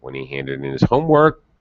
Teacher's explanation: my pitch rises at the end of the clause which denotes the pause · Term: final rising intonation